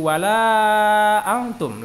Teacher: la-nya panjang 5 harokat atau 2,5 alif. Itu adalah mad jaiz mufasil.